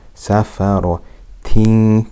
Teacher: Can you hear the ikhfa, the hiding with ghunna for two harakat?